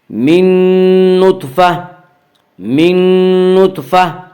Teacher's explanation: گول تا پر وقف کرنے کی صورت میں گول تا ہائے ساکنہ بن جاتی ہے۔